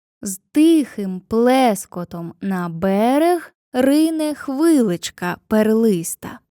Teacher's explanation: третя стопа в рядках містить два ненаголошених склади. Це пірихій. · Хорей, двоскладова стопа з наголосом на першому складі